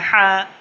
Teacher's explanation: 2 নম্বর মাখরাজ হলকের মধ্যখান হইতে আইন হা